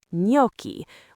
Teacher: The GN combination in Italian is another special case. It makes a ñ sound, very similar to the ñ in Spanish.